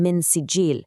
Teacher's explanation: the na sound in min is followed by a sin. That tells us the na sound is going to be a little obscured. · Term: obscured N sound